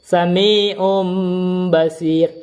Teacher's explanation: Jadi nun sukun dan tanwinnya bertemu dengan ba, maka dia dirubahlah nun sukun menjadi mim. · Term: iqlab